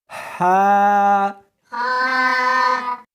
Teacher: اس کو حلق میں سے نکالنا ہے اور ساتھ میں ہوا بھی ہونی چاہیے۔ ہا، ہا نہیں پڑھنی بلکہ اس کو حلق میں سے نکالنا ہے، سینے میں سے نہیں نکالنا۔